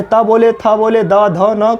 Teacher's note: त बोलते हैं तो जीभ कहाँ सटती है, दांत में। चाहे त बोले, थ बोले, द, ध, न, कुछ भी बोले, इन सभी का उच्चारण किससे होगा, दंत से होगा।